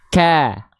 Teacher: huruf kaf vokalnya menjadi A karena dia turun pangkal lidahnya.